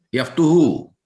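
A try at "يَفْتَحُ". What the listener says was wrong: Yaftahu ya, dari sonanya yaftahu, jangan yaftuhu ya. Karena di Al-Qur'an yang muncul yaftahu.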